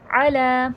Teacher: आइन हुर्फ़ हल्की है, हलक से अदा करिएगा।